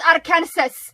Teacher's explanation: the s at the end is silent unlike kansas but and then you're also going to pronounce that a after